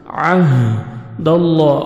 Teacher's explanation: اللہ سبحانہ و تعالیٰ کے نام سے پہلے زبر ہے، لام کو اپنے پر کرنا ہے، موٹا بھی کریں گے اور 1 سیکنڈ کھینچیں گے، کھڑا زبر ہے، عہد اللہ من،